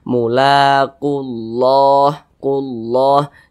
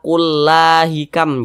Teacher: Mulaqullah, nah, ditebalkan huruf lamnya ini. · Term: dibaca tebal